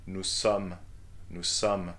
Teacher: it's not an close O, like O, but an open one